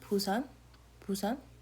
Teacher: When you pronounce it is more like a P sound, Busan, Busan. Even though it is a B, it's pronounced more like a P.